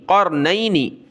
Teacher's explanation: یہاں غنہ ہوگا نون پر